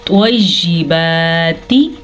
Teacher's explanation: توا حروف مستعلیہ میں سے ہے، اسی لیے توا کو ہم پر یعنی کہ منہ بھر کے پڑھیں گے